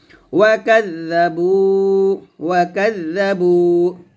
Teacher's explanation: জালের উচ্চারণ জিহ্বাটা উপরের দাঁতে আগা লাগবে, বা ওয়াও পেশ বু, পেশের পর ওয়াও সেখানে ক্লিপ টান দিতে হবে, ওয়া কাযাবু, ওয়া কাযাবু।